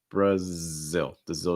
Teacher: also note that stress is on the second syllable